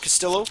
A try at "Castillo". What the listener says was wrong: A double L in Spanish is a Y sound,